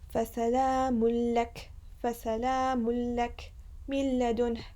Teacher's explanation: We pronounce it in a quick way. There's no غنة.